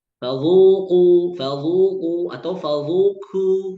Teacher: Qafnya jadi kaf, zalnya jadi dha. Jangan sampai zalnya tetap tipis dalam keadaan dhammah baru irja' ke qaf.